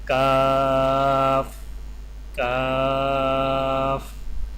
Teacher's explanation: زبان کی جڑ کو کوے کے قریب تالوں پر لگا کر باریک آواز میں پڑھیں، یعنی کاف کاف۔